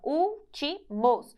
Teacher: tem a antepenúltima sílaba mais forte, então é uma proparoxítona. E as proparoxítonas, independentemente da terminação, são acentuadas.